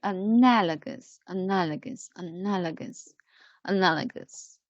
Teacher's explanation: three four four syllables together four syllables together and together and and the stress is on the second syllable